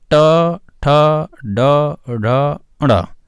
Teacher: ये मूर्धा का स्पर्श करते हुए बोले जाते हैं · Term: टा वर्ग